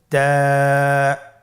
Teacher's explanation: তা হরফটি বারিক হরফ এবং এক আলিফ টেনে পড়তে হবে